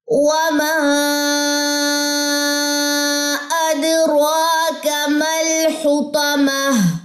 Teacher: میں نے وما کو کافی زیادہ یہاں پہ لمبا کیا ہے کیونکہ یہ مد منفصل ہے, بڑی مد ہے. آپ نے اس کو 4 سے 5 سیکنڈ جو ہے وہ لمبا کرنا ہے.